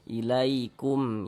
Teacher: Mim sukun setelahnya huruf ya, bukan huruf ba, bukan huruf mim, tapi huruf ya di sininya nih. Maka hukumnya izhar syafawi. Dibaca jelas, tidak berdengung.